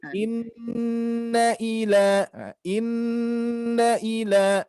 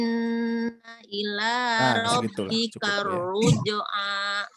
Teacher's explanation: ayat ke-8 nun bertasdidnya kurang ditahan sedikit lagi. Inna ila, ya, dikonsistenkan dengan yang atasnya.